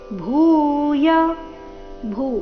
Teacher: ಭೂ ಮಹಾಪ್ರಾಣ ದೀರ್ಘ ಅಕ್ಷರದಿಂದ ಶ್ಲೋಕ ಪ್ರಾರಂಭ ಆಗ್ತಾ ಇದೆ